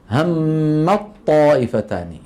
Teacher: يحول التاء إلى طاء ثم يدغم الطاء في الطاء، فيجد بأن هذا أسهل عليه. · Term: إدغام